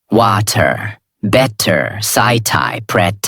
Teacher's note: They say each word with a hard t sound.